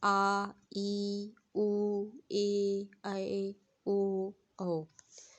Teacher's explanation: दीर्घ स्वर का उच्चारण करते समय ह्रस्व स्वर से दुगना समय लगता है।